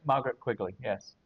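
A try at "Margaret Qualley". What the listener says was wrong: Margaret. Quali. That's it, Quali. Quali, not Quigley. It is Quali.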